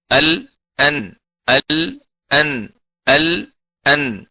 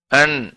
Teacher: ലാമിന്റെ മഹ്റജിൽ നിന്ന് നൂന് പറയാൻ നമ്മൾ ശ്രദ്ധിച്ചാൽ അതിന് സുക്കൂൻ കൊടുക്കുമ്പോൾ അൺ എന്നുള്ള ശബ്ദം വരും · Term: ണയുടെ ചില്ലക്ഷരം